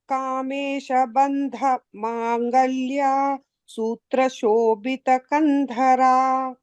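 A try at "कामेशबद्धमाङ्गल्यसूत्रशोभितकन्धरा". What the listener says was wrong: And in the second line, it is Baddha. It's not Bandha. It's Baddha.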